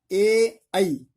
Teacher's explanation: ए आई का उच्चारण कंठ और तालु दोनों से है। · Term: कंठ तालु